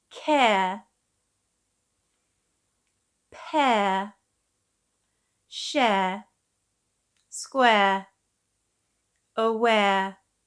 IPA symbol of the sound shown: eə